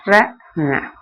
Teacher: நாவினது நுனி மேல் நோக்கி சென்று அன்னத்தை தொடும்போது ர பிறக்கும் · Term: வல்லின ரகரம்